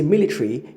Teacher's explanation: if you say military, you've omitted the schwa